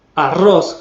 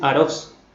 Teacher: en vez de decir arroz fuerte, con la vibrante múltiple van a decir arroz.